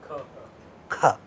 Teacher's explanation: All of them are coming from velum. They are all velar sounds. · this sound ka has a place of articulation which is called velum.